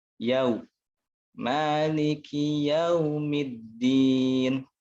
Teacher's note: Harusnya disempurnakan domahnya, madmumah. Mengumpulkan dua bibir ke depan.